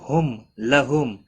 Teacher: دونوں میم ساکن پر اظہار شفوی ہوگا، گنہ نہیں کریں گے۔